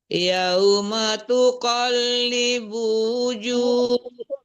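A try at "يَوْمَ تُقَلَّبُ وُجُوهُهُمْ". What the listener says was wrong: Ganti lagi labu bukan libu. tuqallabu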